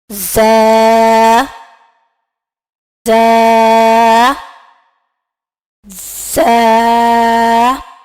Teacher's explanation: زبان کی نوک جب اوپر اور نیچے کے دانتوں کے درمیان آ جائے تو زا ادا ہوتا ہے